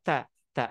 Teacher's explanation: mengucapkan huruf ta itu dengan ada percikan udara ta, ta, ada udara ta, tuh, ta.